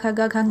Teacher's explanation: क वर्ग ये कंठ के स्पर्श से उच्चारित होता है।